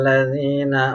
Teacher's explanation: Alif lamnya enggak jelas, alif lam syamsiyah